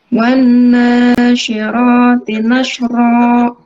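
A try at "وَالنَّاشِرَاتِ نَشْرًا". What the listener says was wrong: Afwan, gunahnya disempurnakan seperti tadi kita contohkan. Wan nasyirati nashra.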